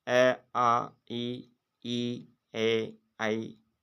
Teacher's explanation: अब यहाँ पर होस्ट जो होते हैं ये गोल नहीं होते हैं। इन स्वरों के उच्चारण करने से होठ गोल नहीं होते हैं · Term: अवृत्ताकार स्वर